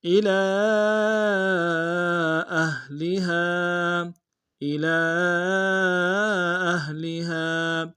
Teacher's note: الی اہلہا، الی اہلہا، الی میں حمزہ کو نون سے ادا کریں گے، لام کے اوپر کھڑا زبر ہے اور مد منفصل ہے، چھوٹا مد ہے، کم سے کم 2 الف انداز میں کھینچیں گے، اور حمزہ کو ہا کے سامنے لائیں گے، اور اگلا جو آخری میں ہا ہے اس کے ساتھ الف مد ایک انداز میں کھینچیں گے۔